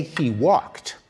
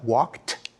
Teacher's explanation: Very few of us realize, for example, in English, that the past tense suffix ed is actually pronounced in 3 different ways. When we say he walked, we pronounce the ed like a t, walked.